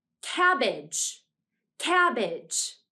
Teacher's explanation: The syllable that we say most strongly is the first syllable. That's because age is usually unaccented in a word, so we say it more quietly than the other syllables.